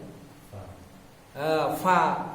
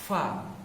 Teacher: Fa itu adalah pertemuan antara apa? Bibir bawah dengan ujung gigi atas ya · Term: huruf bibir